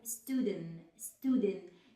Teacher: I drop the T at the end of this word if I have any T cluster